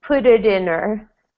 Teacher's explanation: in yeah good and now we have this um her but sometimes we don't pronounce the h it's a little faster especially if you have a consonant like in before the H so here I just say put it in her put it